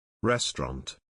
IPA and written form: ˈres.trɒnt (Restaurant)